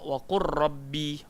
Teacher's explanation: Waqul rabbi, katakanlah Tuhanku. Tapi dalam bacaan tak bunyi langsung lam, masuk terus dalam huruf ra.